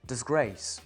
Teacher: le dis est inaccentué, c'est une syllabe qu'on a rajoutée, et grace est bien le mot d'une syllabe qui lui porte un accent et est prononcé pleinement.